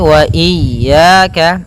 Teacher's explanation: jangan sampai memanjangkan ya-nya atau tidak mentasydidkan ya-nya. Wa iyya pada lafal ya ada mad tabi'i, yaitu berupa fathah bertemu alif, panjangnya 2 harakat.